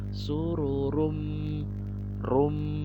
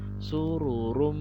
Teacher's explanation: Sesuai dengan namanya, idgham bi gunnah artinya idgham dengan gunnah. Jadi dia ditahan bacanya, digunnahkan 2 sampai 3 harokat. Jadi bacanya sururum rum 2 sampai 3 harokat.